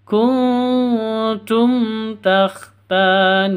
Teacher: jelas terang tidak boleh dengung karena izhar SFA syafawi kuntum taktanuna ta panjang dua ketuk Alif sebelumnya fathah NU juga panjang dua ketuk karena ada wau sukun sebelumnya Dom